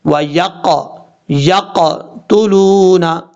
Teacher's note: اب اس کے بعد وَيَقْتُلُونَ، یا کے بعد جو قاف ہے یہ قاف حروف مستعلیہ میں سے ہے، پر پڑھا جائے گا، اور قاف حروف قلقلہ میں سے ہے، حروف قلقلہ کی وجہ سے یہاں پہ قلقلہ بھی کریں گے، کیونکہ جب حروف قلقلہ ساکن ہوں تو قلقلہ ہوتا ہے اس میں۔